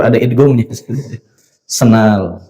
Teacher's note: Orang Sunda itu ya sendal dibacanya senal ya. Jadi melebur ada idgamnya